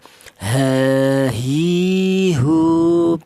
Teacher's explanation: Untuk huruf H keluarnya huruf berasal dari pangkal tenggorokan atau tenggorokan bagian bawah ya. H di mana itu ditempati dua huruf yaitu huruf hamzah dan huruf ha.